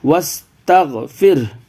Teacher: واو سین زبر وس، یہ الف کو نہیں پڑھتے ہیں، واو کو ڈائریکٹ سین سے ملائیے